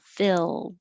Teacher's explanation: And that means your tongue is really high, field. So for filled, keep your tongue flat, except for the coming up for the L